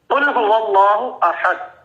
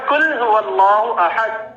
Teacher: یعنی کہ ایک ہے قاف کینچی والا اور ایک کاف کتاب والا ہے. قاف کینچی والا تھوڑا سا بھاری آواز سے ادا ہوتا ہے اور جو کاف کتاب والا ہے وہ دھیمی نرم آواز سے ادا ہوتا ہے. یعنی کہ موٹا جو قاف دو نقطوں والا ہے اس کو موٹا کر کے پڑھتے ہیں, اور اگر ہم اس کو کل کی بجائے کل پڑھیں گے تو وہ ہو جائے گا کل هو اللہ احد, جس کا مطلب ہوگا کھاؤ کہ اللہ ایک ہے.